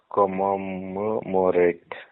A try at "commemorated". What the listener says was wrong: Try to press it again. No. Press it again. It's commemorated. MEM, not MOM. Commemorated. When you say commemorated, it's called the pull of it's called MTI, Mother Tongue Influence.